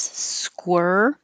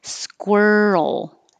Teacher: The vowel is as in her. Squir. You have to round your lips. Squir. Roll up and then touch for the L.